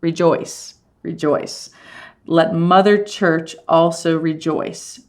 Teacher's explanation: joyce is going to be longer than re because that's how we say it